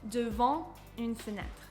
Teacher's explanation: you are not going to hear the t. This letter is going to remain silent because this preposition is not single syllable.